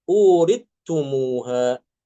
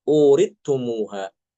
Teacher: Uristumuha surat Al-A'raf ayat 43 dibaca uritumuha. Sa-nya hilang masuk ke ta.